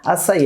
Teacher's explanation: Opa, a sílaba tônica é I.